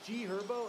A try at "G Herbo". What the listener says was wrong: It's also G Herbo. The H is silent, bro. The H is silent. It's G Herbo.